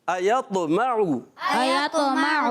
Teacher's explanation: शुरू में हमज़ा आ रहा है, हमज़ा की अदायगी हलक के नीचे वाले हिस्से से, और आखिर में इसके आइन है